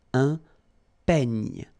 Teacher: this E, I combination will give you this E, open E